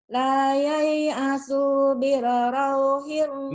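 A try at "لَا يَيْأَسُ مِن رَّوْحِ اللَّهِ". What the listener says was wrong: Mir, bukan bil tapi mir. La yai'asu mir rauhillah. Mir nyamber, mir. Oh, penyakit kau itu mir.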